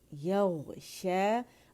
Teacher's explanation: यग़शा या बारीक गैन मोटा और इसमें रखावा शो करेंगे. यग़शा अलिफ मकसूरा शीन की आवाज़ को 2 काउंट के लिए खींच रही, अलिफ मद्दा बन रहा है